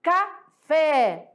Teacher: O fé é a sílaba forte, né? E ela sendo a sílaba forte, e ela aqui sendo última, ela vai ser classificada como oxítona